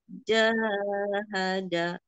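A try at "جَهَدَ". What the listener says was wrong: Ja-nya kepanjangan, hati-hati, Bu. Kepanjangan. Jahada.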